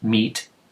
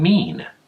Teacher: They both start with me, but they don't rhyme because they don't end with the same sound. Meet ends with that T sound, and mean ends with that N sound.